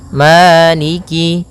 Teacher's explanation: Pada bacaan Maliki di lafal ma ada hukum tajwid berupa mad th'i yaitu adanya fathah bertemu dengan alif panjangnya dua harakat maliki. Kemudian kaf di sini ada huruf kasrahnya maka sempurnakan kafnya jangan seakan-akan diputus. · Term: mad tabi'i